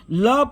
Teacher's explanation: जीभ तालु को छुए किंतु मुंह के दोनों बगल से हवा निकल चल जाए तो पार्श्विक होता है